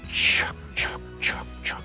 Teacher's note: say it without the vocal cords,